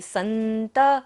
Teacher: त के ऊपर विसर्ग है तो सारा सांस का विसर्जन करेंगे